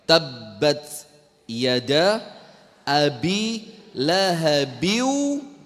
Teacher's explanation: Ditahan dulu baru dikeluarkan hentakannya, baru dikeluarkan pantulannya. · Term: qalqalah